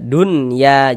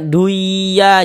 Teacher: Karena dia izharnya dibaca jelas, tak berdengung. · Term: izhar mutlak